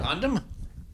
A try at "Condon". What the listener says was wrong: Condon with an N. It's Condon with an N, not Condon with an M, because Condon with an M goes mm, not mm.